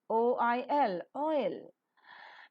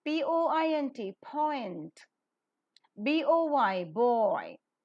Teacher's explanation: And so the glide begins from back, rounded vowel, between open and half open position, and moves towards the front, unrounded vowel, just above the half closed position. The lips are rounded at first and later loosely spread while the glide is pronounced. The diphthong is rising, closing, and wide glide. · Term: OI sound